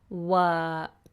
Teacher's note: The following sound is a consonant sound. So we have a flat vowel, work. My tongue does very little until the end for the K.